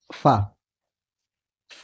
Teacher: दंत्योष्ठ है। दंत्योष्ठ स्पर्श, स्पर्श अघोष महाप्राण